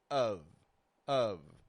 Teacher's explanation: we make an uh and then we bring our bottom lip up to touch our top teeth without making pressure we just rest it there lightly of of now knowing the